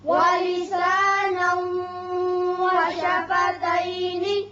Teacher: یہاں ادغام بغنہ ہوگا اور وقت کی صورت میں نون ساکن کریں گے